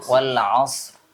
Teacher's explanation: rnya tebal tapi jangan jadi wau